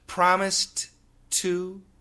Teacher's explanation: Americans, when they say it normally, they're only going to pronounce the T in the to